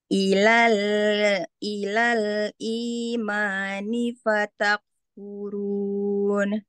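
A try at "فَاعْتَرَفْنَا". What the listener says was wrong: Kafnya hilang, fatak.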